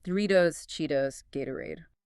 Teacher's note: Think Doritos, Cheetos, Gatorade. The T is between vowels, so it flaps. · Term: flap T